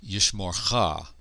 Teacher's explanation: Yishmorcha, and this theme vowel is a short O. It's a kametz hatuf rather than a long A kametz.